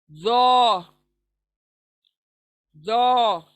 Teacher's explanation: जबान की नोक दांतों के, हमारे सामने के दांतों के किनारे यानी लगने से, सिरे को लगने से अदा होगा। जो, लेकिन पुर पढ़ेंगे, मोटा करके पढ़ेंगे।